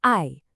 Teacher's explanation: That's a sharp fall, a fourth tone.